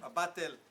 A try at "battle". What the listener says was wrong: a competition, but when you say battle, you have to say battle because the way you're saying it sounds a little like butthole. Butthole. Bowel is something else.